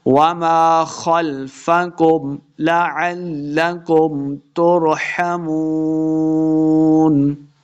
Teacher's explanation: وما خلفکم، خلفکم، خا کو موٹا پڑھیں گے، خلفکم لعلکم ترحمون، واو مدہ ہے، 2 حرکات لمع کریں گے اور آخر پہ ہم نے وقف کر دینا ہے